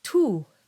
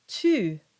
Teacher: So if we look at the word for you in Latin and French, in Latin it's tu, because that U is pronounced as oo, but in French it's tu. And so it's much more rounded and closer to an E sound.